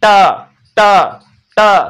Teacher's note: जीभ है वो ऊपर वाले मसूड़ों को टच कर रहा है, अंदर वाले, ऊपर वाले, आगे वाले, है ना, मसूड़ों को टच कर रहा है। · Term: ट वर्ग